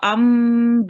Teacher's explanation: after the meme, if there is a ba, you will stay on the meme for a little while.